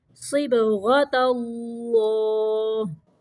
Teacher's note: صاد کو موٹا پڑھنا ہے، غین کو بھی موٹا پڑھنا، اور تا جو ہے اس کو باریک پڑھنا ہے